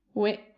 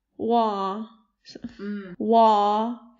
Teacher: way is kind of a a bright sound and wah is kind of a darker sound